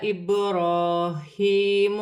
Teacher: ذال نرمی والا حرف نرمی سے ادا ہوگا، الف مدہ بن رہی ہے، با ساکن ہے، حروف قلقلہ میں سے ہے، قلقلے کے ساتھ ادا ہوگا۔ را پر کھڑی زبر ہے، را موٹی پڑھی جائے گی اور ایک الف کی مقدار کھینچ کر پڑھی جائے گی۔